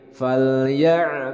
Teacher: huruf Ain dari wastul halqi dari tengah tenggorokan